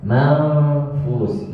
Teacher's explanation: Ketika mengucapkan huruf nun sukun bertemu dengan fa, maka langsung dimasukkan ke dalam fa, huruf fa.